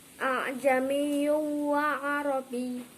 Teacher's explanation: Lah, di sini terdapat dhamma tanwin bertemu dengan wawu. Termasuk bacaan idgham bihuna. Dibaca lebur tetapi mendengung.